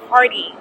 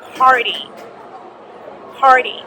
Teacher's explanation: You don't say party, you say party. The T almost sounds like a D.